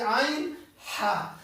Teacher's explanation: عین ہا کا یہ ہمارے درمیان والے حصے سے وسط حلق سے نکلنا چاہیے